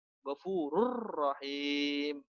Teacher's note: Nun mati dan tanwinnya dimasukkan ke dalam huruf lam dan ro, tapi tidak didengungkan. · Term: Idgham bila gunnah